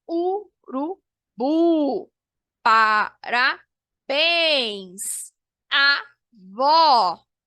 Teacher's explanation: As oxítonas, né? A palavra oxítona, no caso, a sílaba tônica é a última